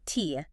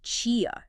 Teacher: Instead of that hard t sound we expect, it softens into a chi sound like at the start of the word chip.